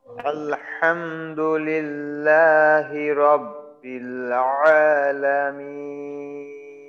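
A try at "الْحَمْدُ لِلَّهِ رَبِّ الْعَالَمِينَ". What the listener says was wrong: তবে এখানে হামজার উচ্চারণটা যেন আইনের মতো না আসে, আর র রটা যেন একটু মোটা হয়। আলহামদুলিল্লাহি রাব্বিল আলামিন।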